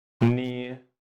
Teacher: The shape of third tone is V shape.